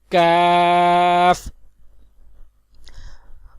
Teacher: کیف زبان کی جڑ اور تالو کے سخت حصے سے ادا ہوتا ہے